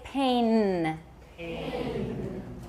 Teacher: N is an alveolar sound. The tip of your tongue is touching your alveolar ridge.